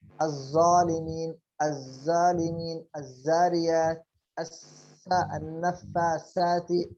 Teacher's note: المخرج الأخير من طرف اللسان هو يخرج منه 3 أحرف، الضاء والذال والثاء. هذا المخرج هو طرف اللسان مع أطراف الثنايا العليا